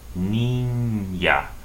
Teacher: The ñe, which is N with a tilde on top, is pronounced as if there was a Y right after this N. Between the N and the A, there's a Y.